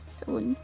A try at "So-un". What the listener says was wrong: Yeah, it's So-un. Like, you do pronounce the separation between so and un.